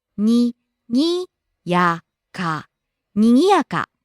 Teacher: rising on the second syllable Gi, coming down on the third syllable Ya and staying low.